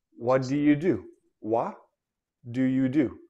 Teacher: T and D, these are two different consonants, but according to the tongue and the mouth, they almost sound the same